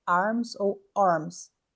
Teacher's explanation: É uma mistura entre o a e o o.